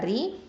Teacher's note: இது தர்க்கிக்கா ஓதணும், அதாவது லைட்டாக தான் ஓதணும்.